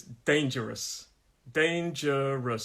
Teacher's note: us that one okay the next one dangerous dangerous three syllables dangerous first syllable is the stressed syllable uh first of all is the stress syllable so it's dangerous